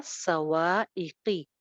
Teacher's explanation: स्वाद अगेन मोटा, वाव पे होंठ गोल, एक अलिफ लंबा · कॉफ थोड़ा सा मोटा रहेगा लेकिन जेर के साथ है, ज्यादा मोटा नहीं करेंगे।